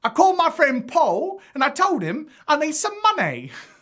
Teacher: it's as though the l sound is replaced with an elongated vowel or even a soft w · instead of clenching off the sound, we're going to allow this L to just kind of drift and fade away. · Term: dropped l, dropped L